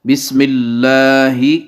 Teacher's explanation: یہ ہا پڑھا جائے گا سینے والی سائڈ سے بھاری آواز کے ساتھ